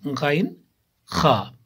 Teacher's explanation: ادنائے حلق یعنی حلق کا منہ کی طرف والا حصہ